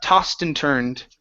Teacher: very rarely do we say oh, toast. It's usually ah.